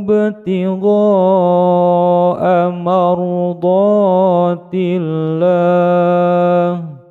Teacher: huruf ba yang disukunkan di tengah-tengah bacaan atau kalimat disebut dengan qalqala sughra, memantul kecil